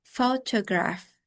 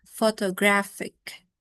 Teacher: the stress shifts from the first syllable, photograph, to the third syllable, photographic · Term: stress-shifting suffixes